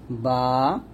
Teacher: দুই ঠোঁটের ভিজা অংশ মিল করে বাটা উচ্চারণ করব